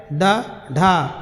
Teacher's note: उत्क्षिप्त व्यंजन का जो उच्चारण होता है ड ढा, वो तालु और मूर्धा की सहायता से होता है। तालु और मूर्धा से निकलने वाले जो वर्ण हैं वो आपके उत्क्षिप्त व्यंजन हैं, 2 होते हैं।